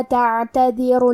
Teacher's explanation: کلمت تعتذروا میں عین ساکن ہے تو ہمیں عین کو ظاہر کرنا ہے۔